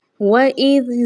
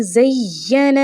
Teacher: ज़ाल को ढीले होंठों के साथ नरमी के साथ पढ़ा जाएगा, जबकि ज़ा को सीटी वाली आवाज़ और मजबूती के साथ पढ़ा जाएगा